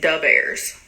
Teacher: The th sound, is omitted and replaced by d.